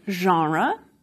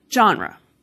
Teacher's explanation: We see this Englishification happening with a word like genre, borrowed in from French, that je sound at the beginning of a word, not a very English thing to do, and for some speakers, genre has become genre.